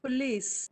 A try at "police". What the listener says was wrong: No, it's not po. No, don't say police. Say police. Don't say o, but a. Sound schwa.